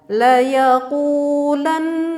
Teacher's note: harakat ataupun tiga ketukan ya laa yaqulana membacanya seperti itu ya kita dengungkan ini Nun 3 harokat karena mendengungkannya ini tidak membutuhkan huruf sesudah Nun coba diperhatikan di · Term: ghunnah ashliyah